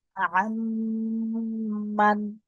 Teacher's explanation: নুন সাকিনের পরে হরফে ইউমিনের 4টি অক্ষরের মধ্যে মিম এসেছে, ইয়া ওয়াও মিম নুনের মধ্যে মিম এসেছে, হরফে ইউমিনের 4টি অক্ষরের মধ্যে মিম এসেছে। নুন সাকিনের আওয়াজকে মিলিয়ে এক আলিফ পরিমাণ গুণনা করে পড়তে হবে। একে ঈদগামে বাগুনা বা ঈদগামে নাকিস বলে।